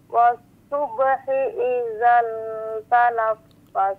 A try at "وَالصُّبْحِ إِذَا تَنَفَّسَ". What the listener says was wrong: was subhi, izanya panjang dua harakat tuh, was subhi iza tanaffas,